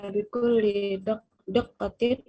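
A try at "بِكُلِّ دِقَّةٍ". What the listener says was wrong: la laysa daqqa. Mana daqqa? Diqqah terperinci.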